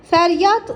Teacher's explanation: Fəryad isə D sonda T kimi tələffüz olunur.